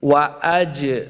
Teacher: جیم حروف قلقلہ سے آ گیا ساکن ہے، اس کو خوب واضح کرنا ہے